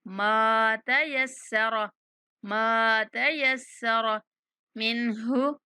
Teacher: ماں کی آواز ناک میں نہ لے کے جایا کریں، منہ کھول کے پڑھا کریں